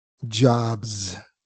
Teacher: Entonces, esa S debe sonar vibrada.